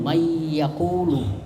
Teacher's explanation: Idgham itu dimasukkan bugunna dengan dengung, jadi tidak dibaca man tapi mai, karena dimasukkan ke ya. Jadi nunnya itu berubah menjadi ya, mayya, dengan dengung, mayyaqulu. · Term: idgham bigunnah